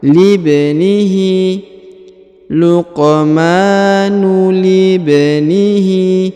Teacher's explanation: huruf li langsung sambung ke huruf ba, kemudian diqalqalahkan atau dipantulkan. Libnihi, luqmanu libnihi, lib langsung di sini ya, disambung ke huruf ba.